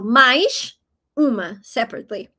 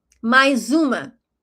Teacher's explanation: If you say it fast, it sounds like a Z, as you probably realized.